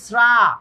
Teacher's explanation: শ্রা টানা যায়, শ্রা, কোনো বাধাবাধি নাই, শ্রা টানা যায়। এই উচ্চারণটা কিন্তু টানা যায়, দেখো এই উচ্চারণটা টানা যায়, এই উচ্চারণটা টানা যায়।